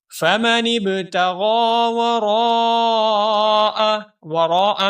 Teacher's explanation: تغا میں غین کو ہم موٹا کر کے پڑھیں گے اور غین کے اوپر کھڑی زبر ہے اس لیے غین کو ایک الف کے برابر لمبا بھی کریں گے